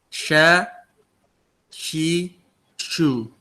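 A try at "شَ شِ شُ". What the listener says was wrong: Nah, jangan she, jangan mingkem antum. Kalau kasroh itu pipih. Shi, bisa jangan she, jangan mingkem ke atas. Sha, shi, shu.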